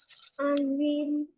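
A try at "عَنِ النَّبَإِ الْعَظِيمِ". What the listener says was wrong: Kasih barisnya kan nggak mati kalau di Quran itu. Kita yang baca mati.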